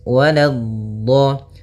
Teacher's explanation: la-nya jangan sampai tebal, jangan waladdo, tapi la-nya tipis